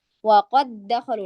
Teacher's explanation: Jadi kita membacanya seperti waqad dakhalu waqad dakhalu waqad dakhalu waqad dakhalu, itu tidak boleh ya. Jadi harus waqad dakhalu, langsung masuk ke huruf setelahnya. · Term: idgham mislain